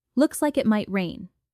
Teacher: Emphasize looks. Soften on rain, to share an observation rather than a firm prediction.